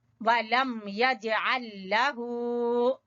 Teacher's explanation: जीम के ऊपर हल्का कलकला